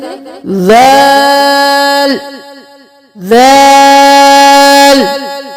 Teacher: अब दाल को भी सा की तरह पढ़ेंगे, नरमी से अदा करेंगे। ऊपर और नीचे के दांतों के दरमियान जुबान को रख के फिर अदा करेंगे